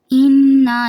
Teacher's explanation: غنہ ہو رہا ہے، اس کو ناک میں آواز لے کے جائیں گے